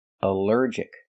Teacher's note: Here the ALL is not pronounced all, but pronounced like in cup and up, because it's not stressed.